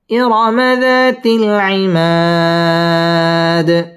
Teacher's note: জবরের বাম পাশে খালি আলিফ মদের হরফের বামের হরফে ওয়াকফ এটা মধ্যে আরজি তিন আলিফ টান দিয়ে ওয়াকফ করতে হবে